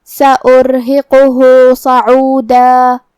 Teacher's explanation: یہاں حرف الراء پہ جزم ہے تو را کا حکم ہے تفخیم کیونکہ اس کے پہلے والے حرف پہ مطلب الف پہ پیش ہے، لہذا ہمیں را کو بھاری آواز میں پڑھنا ہے